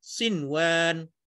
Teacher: Izhar mutlak ini di mana dijelaskan sebutan nun mati tersebut tanpa didengungkan